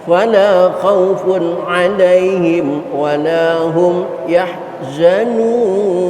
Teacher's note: Yang kedua walahum yahzanun, mim mati ketemu ya. Dua-duanya izhar syafawi, jangan diikhfakan, jangan ditahan.